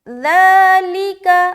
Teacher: صرف ذال کو لمبا کرنا ہے، لیکا کو بالکل جلد ادا کریں گے کیونکہ دونوں کے نیچے زیر اور زبر ہے۔